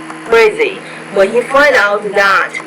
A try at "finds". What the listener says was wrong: When he finds out, don't forget the S, and it's a Z because it comes after a voiced consonant.